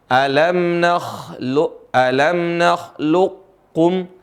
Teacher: Menggabungkan huruf yang pertama ke huruf yang kedua. Jadi seolah-olah huruf qaf itu nggak ada. Seolah-olah huruf itu nggak ada dalam bacaan. Tapi tertinggal sifatnya. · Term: idgham